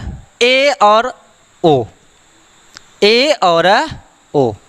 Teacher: ए ओ का उच्चारण करेंगे तो आपको प्रतीत होगा, लगेगा कि हमारा मुख आधा बंद है